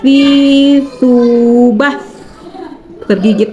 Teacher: Yang ketiga adalah huruf yang keluar dari ujung lidah menempel antara gigi seri atas dan gigi seri bawah seperti tergigit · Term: huruf sa